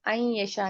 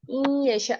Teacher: ये इन यशा है, इसको आइन यशा नहीं पढ़ना। हमजा के ऊपर आप जबर देंगी तो इसकी साउंड आइन यशा बन जाएगी, और अगर जेर के साथ इसको पढ़ेंगी तो ये इन यशा पढ़ा जाएगा।